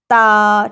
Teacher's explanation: جب آپ زبان کی نوک کو ان اوپر والے سامنے کے 2 دانتوں کی جڑ کیا مطلب کہ ان کا اندرونی حصہ اندر والی سائڈ کے ساتھ مسوڑوں کے ساتھ لگاتے ہیں تو ادا ہوتا ہے تا، تا، ٹھیک ہے۔